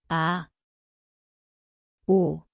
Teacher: Tempatnya adalah tekak, permulaan senyap. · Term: 이응